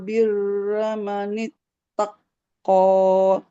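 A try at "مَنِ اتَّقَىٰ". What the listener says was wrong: Kofnya nggak boleh ditekan kan nggak ada tasydidnya. Manit tako.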